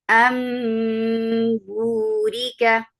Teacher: میم بعدی امبوری کا، بس ہم نے نون کی آواز کو چینج کر کے میم بنا دیا